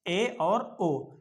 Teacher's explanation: ऐसे स्वर जिनके उच्चारण में हमारा मुंह लगभग आधा खुला रहता है उसको हम कहते हैं अर्ध संवृत। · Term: अर्ध समृत